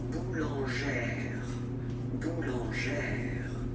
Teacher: accent grave, you pronounce it like A, really open A sound